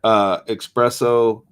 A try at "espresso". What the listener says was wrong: I gotta ask, where's the X? There is no. It's not espresso. Espresso.